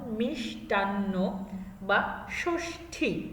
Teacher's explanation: মূর্ধন্য স দিয়ে যখন আমরা কোনো শব্দ লিখবো বা পাবো, সংযুক্ত অবস্থায় পাই, তখন সেটা তালব্য স এর মতো উচ্চারিত হবে। হ্যাঁ, মূর্ধন্য স এর সাথে কোনো কিছু সংযুক্ত অবস্থায় থাকলে তার উচ্চারণটা হবে তালব্য স এর মতো